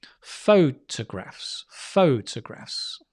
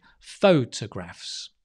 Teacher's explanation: So the stress is on the pho. So therefore, the T-O becomes not ta, but ta, photographs.